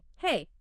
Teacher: It specifically notes that the pitch isn't flat. It goes up slightly on hey, and then it comes down at the end on me. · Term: rise-fall contour